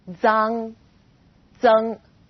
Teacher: Its pronunciation is quite similar to the DS sound in English, like cards, but you need to move the tip of your tongue closer to the back of your teeth.